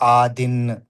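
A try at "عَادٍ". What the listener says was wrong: ఆదిన్. ఐన్ శబ్దం మంచిగా రావాలి. ఆదిన్.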